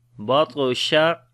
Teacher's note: this ta we read in heavy sound, and also we make qalqala, which is the weak qalqala